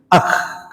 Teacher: Jadi harus ada ee udara yang mengalir. Makanya ketika ada udara mengalir ketika dia disukun maka berubah menjadi akh. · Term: sifat hames